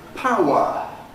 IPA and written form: ˈpaʊə (power)